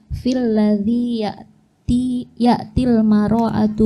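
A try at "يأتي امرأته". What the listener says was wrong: ya'tim ra'atahu Itu salah, ya'tim ra'atahu. Mimnya nggak pakai harokat.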